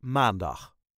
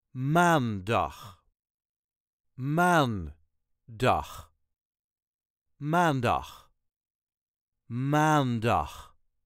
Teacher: as with all the days of the Week The emphasis Is Always On The First syllable